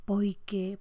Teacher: En algunas zonas del Caribe es muy típica la vocalización de la L